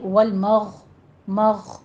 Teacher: یہ آپ نے سٹاپ کرنا ہے، ادنا حلق سے غین کو ادا کرنا ہے